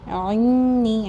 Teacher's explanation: اعنی، حمزہ اور عین کے مخرج میں بہت مسٹیک ہوتی ہے، بالکل لائٹ پیس پہ، عنی، عین کا مخرج بالکل کلیئر ہونا چاہیے، نون مشدد ہے، اس کی سختی کا، اس کی مضبوطی کا خیال رکھیں گے۔